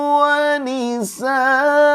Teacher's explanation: Mad iwad itu adalah berhenti di tanwin fathah selain tak marbutoh. Jadi meskipun tidak ada alif di belakang, tetap dibaca 2 harokat karena patokannya adalah fathatain atau tanwin fathah.